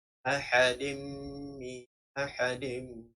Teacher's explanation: Dan bacaannya adalah memasukkan dengung ke dalam huruf mim. · Mana-mana huruf idgham ma'al gunnah, kita masukkan dengung ke dalam huruf selepasnya dengan bacaan ahadim ahadim. Masukkan dengung dalam huruf selepasnya iaitu dengan dengung 2 harakat. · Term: idgham dengan dengung